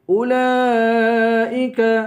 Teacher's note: اولئک کو 5 الف کے برابر کھینچ کر پڑھیں گے